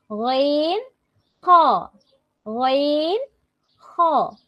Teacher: হলকের শেষ ভাগ হতে গইন, খ